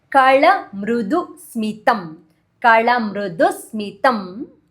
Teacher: Kala, L capital, tongue tip will touch upper palate.